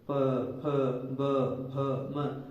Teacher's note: बिना होठों की सहायता के ये बोले ही नहीं जा सकते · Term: ओष्ठ्य वर्ण